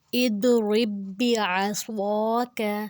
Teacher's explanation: صاد کے اوپر زبر ہے، اس کے آگے الف ہے، الف مدہ، تو اس کو ہم نے 2 حرکت لمبا کیا۔ · جو با کے اوپر جزم والا ہے اس کو ہم نے نہیں پڑھا، بلکہ جو شد والا ہے اسی کو ہم نے 2 بار پڑھا ہے۔ شد والے لفظ کو ویسے بھی 2 بار پڑھنا ہوتا ہے، جو جب بھی اس کے پچھلے حرف پہ جزم ہوگا تو اس کا پچھلا حرف ڈیڈ ہو جائے گا۔